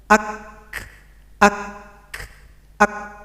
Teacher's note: Kaf ditahan dulu baru ada bunyi Hamas